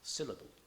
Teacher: the word syllable is stressed on the first of its 3 syllables